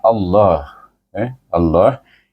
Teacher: baris di atas kita Idam syamsikan dia dengan lam jalalah itu kita baca lam jalalah itu dengan tebal dua harakat itu bermula dengan alif lam tebal